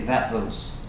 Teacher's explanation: these two sounds right here the T and the th are going to run together and so that t doesn't even sound